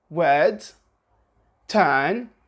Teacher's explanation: the R is not pronounced contrary to the American accent